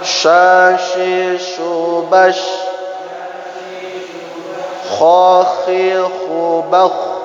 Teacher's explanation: Nah, ini huruf-huruf yang mempunyai bayangan atau hamas ketika dia membacanya.